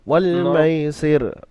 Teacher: ওয়াল মাইসির, হ্যাঁ, হরফে লিনকে নরম আওয়াজে তাড়াতাড়ি পড়তে হবে, টান দেওয়া নিষেধ। সিনের নিচে জের হারাকাত, আর রয়ের নিচে জের, রব বারিক করে পড়তে হবে। আর এখানে যেহেতু রকে আপনি রয়ের উপরে ওয়াক করছেন, থামছেন, তো এখানে রকে সাকিন করে পড়তে হবে।